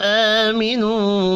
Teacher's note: آمینو کھڑے زبر کو اور واو مدہ کو ایک ایک الف کے برابر کھینچ کر پڑھیں گے۔